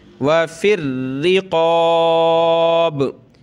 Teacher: वफिर रिक़ाब, बार है तो इस पर कलकला होगा और रा को सख्त करेंगे, क़ाफ़ को मोटा करेंगे। वफिर रिक़ाब, ये फ़ा जो है मिलेगा इस रा के साथ, फ़ा रा ज़ेर फिर रा ज़ेर री, वफिर रिक़ाब।